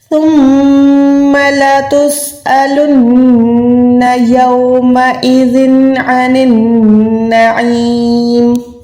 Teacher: عین یا زیر عی کو 1 سیکنڈ کھینچنا ہے، حلق کے درمیان سے ادا کرنا ہے